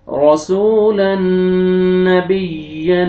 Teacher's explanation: تنوین کے بعد حروف یرملون میں سے نون ہے آپ نے ادغام کرنا ہے غنہ کے ساتھ